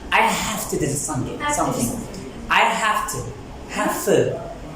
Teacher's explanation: Or sometimes V changes to F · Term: assimilation